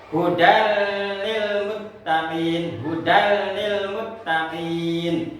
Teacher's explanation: meleburkan nun mati atau tanwin ke dalam huruf lam atau huruf roh tanpa dengung. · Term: idgham bila guna